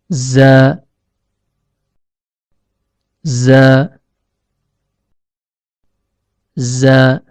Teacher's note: Huruf zai keluar dari ujung lidah yang bertemu dengan bagian dalam gigi seri bawah.